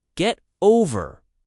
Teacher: the stress is on over.